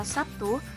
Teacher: Akan tetapi pada kata Sabtu, fonem B diucapkan sebagai P. Jadi realisasi fonem B dalam pelaksanaan ujaran bisa menjadi B dan P. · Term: alofon